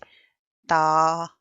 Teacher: ता जुबान की नोक और ऊपर के दांतों की जड़ से अदा होता है